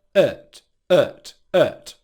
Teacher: So the word 'at' has a second rhythmic pronunciation where you reduce that /æt/ vowel sound to a schwa so you get /ət/ /ət/ /ət/ And whenever you have a schwa in a syllable in English it means that it's a weak unstressed syllable.